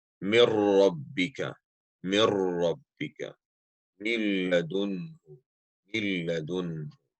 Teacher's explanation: Second category of idgham would be idgham without nasalization, or merging without nasalization, without ghunna. Idgham bighayri ghunna.